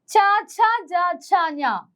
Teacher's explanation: ച എന്ന് പറയുന്ന അക്ഷരം ഉച്ചരിക്കുന്ന സമയത്ത് നമ്മുടെ നാക്ക് മുകളിൽ തട്ടും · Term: താലവ്യ അക്ഷരങ്ങൾ